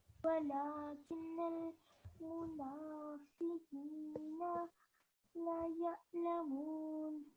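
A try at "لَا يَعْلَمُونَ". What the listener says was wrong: Okay, so over here, because we have alif madda attached to the lam, it's going to be slightly longer. So it'll be la ya'lamun.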